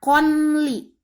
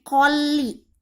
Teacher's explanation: hilangkan bunyi n-nya dan masuk ke suara L atau bunyi L. Jadi bukannya konli, tapi kolli. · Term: idgham bila gunah